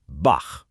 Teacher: That ch after a vowel like ah is a raspy sound from way in the back of your throat. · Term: most famous sound